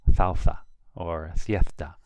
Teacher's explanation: So, for example, these words, salsa, is pronounced salsa or siesta or España. In the south of Spain, sometimes it's pronounced like a TH. So you will actually hear a southerner in the south say salsa or siesta, which is very hard for English speakers to really capture.